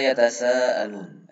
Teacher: ada huruf mat, setelahnya ada hamzah dalam satu kalimat, maka huruf mat ini dibaca 5 harokat wajib. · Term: mat wajib mutasil